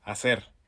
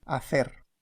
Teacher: That means that the letter Z and the letter C before I or E are pronounced S rather than th, as they are in the pronunciation that's considered standard in Spain. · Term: ceseo